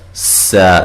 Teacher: یہاں نون ساکن کا اخفا ہے، سا، سین کو باریک سیٹی سے اور الف مدہ ہے